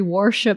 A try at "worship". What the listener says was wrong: Like a warship.